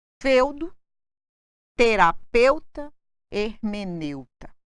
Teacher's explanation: o ditongo eu é sempre fechado